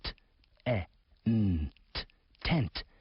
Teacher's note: It starts with the t sound, followed by the vowel sound eh, the n, and the final t.